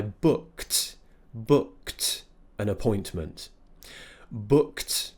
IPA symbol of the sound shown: t